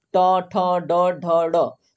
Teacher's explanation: तो आपका जीभ जो है आपका जो अंदर का मोटा वाला मसूड़ा है जिसको हम मुर्धन्य बोलते हैं मुर्धा बोलते हैं वहां पर जाके टच होता है